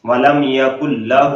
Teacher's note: ہو کو لمبا کرنا ہے، الٹا پیش ہے، الٹا پیش تھوڑا لمبا کیا جاتا ہے